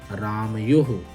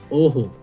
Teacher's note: लेकिन यहाँ पर कंठ नहीं होगा क्योंकि ये विसर्ग किस पर आश्रित है, ओ, और ओ का उच्चारण स्थान क्या होता है, ओ का उच्चारण स्थान होता है कंठोष्ठ।